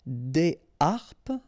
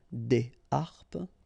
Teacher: so you don't make the liaison between the two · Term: H aspiré